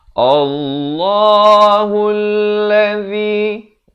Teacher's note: Lafz jalalah di sini dibacakan tebal dengan 2 harakat. Allahul ladzi.